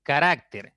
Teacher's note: carácter es una palabra de tres sílabas la mayor fuerza está en la segunda sílaba